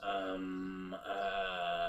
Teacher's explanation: That's the glottal fry. It's a nasal glottal fry.